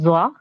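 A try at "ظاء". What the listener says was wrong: जॉ नहीं बोलेंगे, जॉ नहीं पढ़ते, जा।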